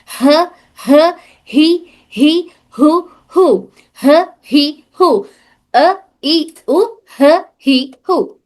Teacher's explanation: ह ये भी हमारे इस हलक के सबसे निचले हिस्से से अदा होता है। इसमें भी पढ़ते वक्त में हमारे सीने में सीने में मूवमेंट होती है। · हमारे हलक के सबसे निचले हिस्से से एक और हर्फ ह अदा हो रहा